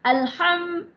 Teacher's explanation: Kenapa syafawi syafawi bermaksud bibir ya kerana huruf mim makhrajnya adalah makhraj maksudnya tempat keluar huruf mim adalah dari dua bibir